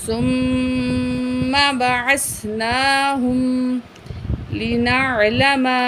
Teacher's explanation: یہاں میم میں جو ہے تشدید ہے، تو یہاں ہم غنہ کر کے پڑھیں گے